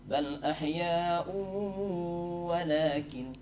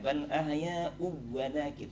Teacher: Ahya'un bertemu waw. Baris 2 dhammah bertemu waw. Itu menjadi idgham bi gunnah, harusnya dengung.